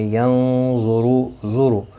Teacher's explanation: نون ساکن کے بعد حروف اخفا کا غا آیا ہے، اخفا حقیقی ہوگا، گنہ کے ساتھ